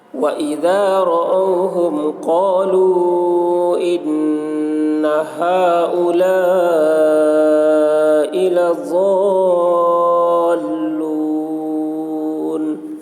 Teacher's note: قالو میں حرف مد ہے، حرف مد کے بعد حمزہ دوسرے کلمہ میں ہے، اس لیے مد منفصل ہوا۔ مد منفصل کو 3 یا 4 الف کے برابر کھینچ کر پڑھیں گے، 1 الف کے برابر کھینچ کر پڑھنا بھی جائز ہے۔